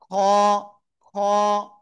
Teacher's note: এই গলার শেষ ভাগ থেকে, এই যে প্রায় জিহ্বার গোড়ার কাছাকাছি ওই জায়গা থেকে আমাদের উচ্চারণ করতে হবে, গলার শেষ ভাগ থেকে।